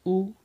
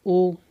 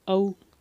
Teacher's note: वो है वृत्तमुखी, ठीक है, वृत्तमुखी नाम से स्पष्ट है, मतलब ऐसे स्वर जिनका प्रयोग करते समय या जिनका उच्चारण करते समय हमारा मुख कैसा हो जाएगा, गोलाकार हो जाएगा , ठीक है, गोलाकार हो जाएगा, है ना, जैसे क्या हो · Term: वृत्तमुखी स्वर